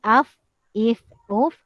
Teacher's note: Bibir bawah ditekan ke gigi kapak bahagian atas untuk sebutan huruf fa